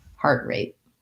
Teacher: the heart has the r diphthong and this a is the tense a